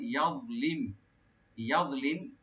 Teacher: দোয়া একটু মোটা হবে, এখানে ডিপ হবে